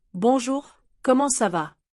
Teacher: Did you hear how comment ça va become almost comme ça va? They drop the NT.